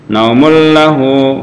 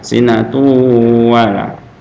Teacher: Jadi naumulla masuk langsung ke hurufnya dan tidak boleh panjang dan tidak berdengung ya. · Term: idgham bila gunnah